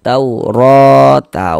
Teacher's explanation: Maka huruf ro dibaca panjang. Mad thabi'i panjang dua harakat.